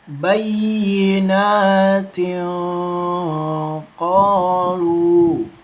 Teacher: Kemudian di sini ada hukum bacaan ikfa ketika tanwin atau tanwun bertemu dengan huruf qof termasuk hukum bacaan ikfa disamarkan membacanya dua ketukan